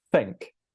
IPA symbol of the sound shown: θ